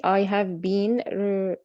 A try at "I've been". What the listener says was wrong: لا فين ال I have؟ أنت شايفة have ولا I apostrophe VE؟ I've been. as long as it's written in a short form, you have to pronounce it in a short form. in a, yes, I've been.